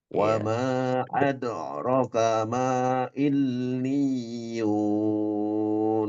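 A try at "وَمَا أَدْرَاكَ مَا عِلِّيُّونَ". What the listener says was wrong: Oke, benar. Tapi rnya tadi enggak panjang. Rnya mestinya panjang.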